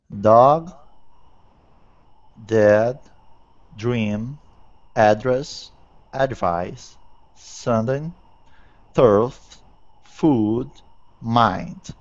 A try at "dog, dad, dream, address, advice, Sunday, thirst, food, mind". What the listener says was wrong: Excellent. Well done.